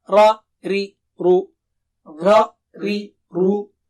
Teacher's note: By the way, ri is thin. Ra and ru are thick.